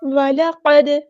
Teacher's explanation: دال ساکن پہ کلکلا ہو رہا ہے